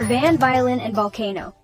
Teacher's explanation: Can you feel that vibrating VV sound?